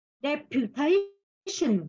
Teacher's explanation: Nhớ âm thờ bật hơi nhé.